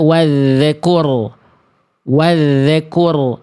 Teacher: Ada bunyi z di huruf zalnya, berarti itu memantul, tak boleh.